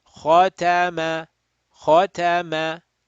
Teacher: kha rounded, ta flat, mim flat